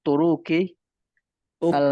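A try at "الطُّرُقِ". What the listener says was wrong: Turunya jangan panjang.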